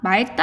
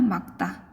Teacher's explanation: 리을 기역은 뒤에 자음이 왔을 때 뒤에 오는 기역으로 선택합니다